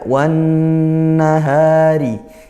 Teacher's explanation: Yaitu idgham syamsiyah, langsung masuk ke huruf syamsiyahnya, yaitu huruf nun. Karena dia idgham masuk, maka dia bertasydid, nun bertasydid menjadi ghunnah, dibaca dengung.